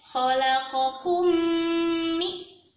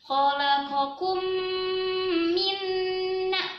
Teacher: dibaca dengung yang lama karena ada mim sukun bertemu mim tasydid. Kalau di tajwid namanya idgham misli ya.